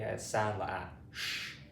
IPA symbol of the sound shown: ʃ